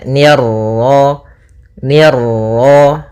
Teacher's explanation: ni tipis ketemu ro yang ro tafkhim ro tebal · Nah, kemudian pada lafaz ma ada bacaan mad tabi'i yaitu fathah bertemu alif, ni tipis ketemu ra yang ra tafkhim, ra tebal